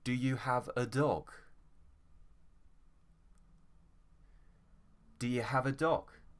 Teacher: it's a yes no question so the tone goes up do you have a dog do you have a dog so